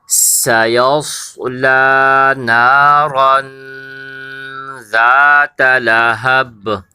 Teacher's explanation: اس کے اندر آپ نے سین کی آواز کو صاف نکالنا ہے، سیٹی کی آواز کی طرح۔